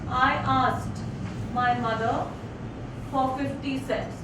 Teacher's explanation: So, unstressed, stressed, unstressed, stressed, it goes like that. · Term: iambic feet